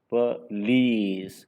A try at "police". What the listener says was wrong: Police. Not O sound. police. Police. Police.